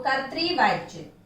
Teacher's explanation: कर्तृवाच्य, इसका उच्चारण देखिए, का ऊपर ये रेफ वाला र है जो कि आधा उच्चारित होगा, और ता में री की मात्रा लगी हुई है, त्रि, तो कर्तृवाच्य।